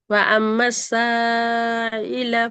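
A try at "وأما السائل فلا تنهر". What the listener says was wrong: திருப்பி ஃபலாவும் சாவும் ஒரே அளவு நீட்டப்படாது. அது பெரிய பிழை. இந்த சாவை நீட்டுறதும் இந்த லாப நீட்டுறதும் ஒரே அளவு வர இயலாது.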